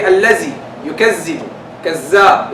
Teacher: They replace the dal with the zai.